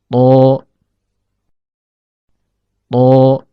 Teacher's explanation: Huruf ta keluar dari ujung lidah yang bertemu dengan pangkal gigi seri atas.